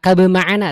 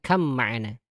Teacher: Jadi ba ketemu mim dia di leburkan. Sama ya, secara ini tuh mutajanisain ya, sama makhraj tapi beda sifat. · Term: idgham